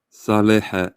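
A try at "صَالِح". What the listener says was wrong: Si tu peux emphatiser plus le sa. Saleh. Saleh.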